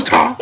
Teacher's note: the more you say it, there's more of an emphasis on the last syllable.